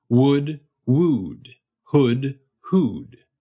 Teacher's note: That first vowel is u. It's a vowel we use in words like wood, and it has a slightly lower and further forward tongue position than oo has.